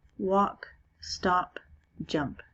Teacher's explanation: in these words the last sound of the word has no vibration in the throat if i say those are quiet sounds and so the ed